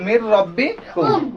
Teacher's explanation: তাহলে মিলালাম কিন্তু গুন্না করলাম না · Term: গুন্না ছাড়া মিলিয়ে পড়া